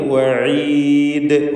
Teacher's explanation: വഖഫ് ചെയ്യുമ്പോൾ വഈദ് ദാലിൽ ഖൽഖല കുബ്ര നൽകിയാണ് നല്ല പോലെ ശബ്ദം കേൾപ്പിച്ചുകൊണ്ട് ദാലിൽ സുക്കൂൻ നൽകി വഖഫ് ചെയ്യുക. എന്നാൽ ഷദ്ദ് വരേണ്ടതില്ല, ശ്രദ്ധിക്കുക.